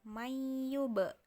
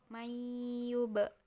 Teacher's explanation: Jadi bibir atas dan bibir bawah bertemu sambil dipantulkan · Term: qalqalah